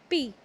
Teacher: We speak p with the help of both the lips